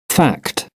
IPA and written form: fækt (fact)